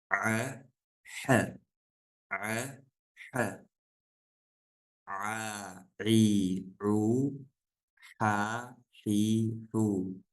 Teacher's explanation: айн ха это средняя часть горла